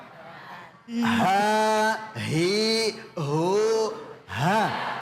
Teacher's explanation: Haknya di sini adalah halak, ya. Berarti di tenggorok.